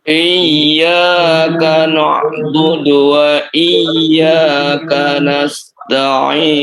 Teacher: Huruf ain ya, ain. Posisi ain ya diperhatikan ya. Itu di pertengahan tenggorokan. Harus diperhatikan, harus dibawa ke sana ya.